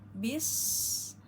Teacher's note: ke sin sukun maka kita keluarkan shofir dan hamesnya